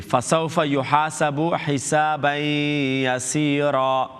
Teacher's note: And after tanween is a ya is yar malun letter. You have to mark the tanween sound to ya, then make the gunna. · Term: Idgham with gunna